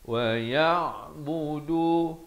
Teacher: ya baris atas bertemu ain. Ain di pertengahan kerongkong ini.